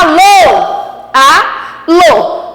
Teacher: o Lô é a sílaba tônica, é a sílaba mais forte dentro da palavra. Então, o Lô, ó, a última sílaba é a mais forte.